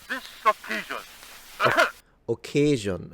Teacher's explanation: So, as we were noticing in the previous video that I posted yesterday, rather than occasion, it's occasion. So, it's a lengthened vowel rather than a full dip thong